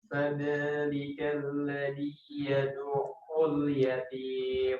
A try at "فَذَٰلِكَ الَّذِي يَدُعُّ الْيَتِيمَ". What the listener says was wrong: Coba faza antara za dan da harus beda. Faza za zidu. Fadzalikal, coba. الذي فذلك الذي ذي coba فذلك الذي